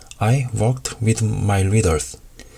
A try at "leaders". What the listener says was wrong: 이분은 특이하게 L 발음이 R처럼 들리네요. 안 됩니다. reader 혀를 좀 푸시고 leaders 길게 끌어주세요. 발음, 문법, 유창성이라고 있다고 하면은 발음에서 조금 문제가 있을 것 같아요.